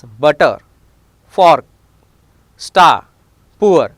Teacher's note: Letter R is silent in British English if it is followed by consonant or at the end of the word.